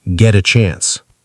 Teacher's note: The T in get is a flap T.